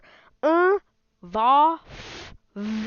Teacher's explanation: labio Dental means the teeth and the lips